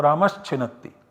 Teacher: Let us first of all go to Ramaha plus Chinatti, and the output generated is Ramas plus Chinatti. So this visarga is substituted by s because this visarga is followed by ch, which is a khar